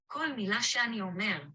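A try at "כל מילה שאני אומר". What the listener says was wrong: It's like when you say this word here, it's almost like all one thing. You don't really hear the segol here, do you? It's like shani, like shani. It's not she'ani, it's shani.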